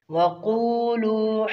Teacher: قاف کو موٹا کریں گے اور دونوں مدہ ہیں ایک ایک الف برابر کھینچیں گے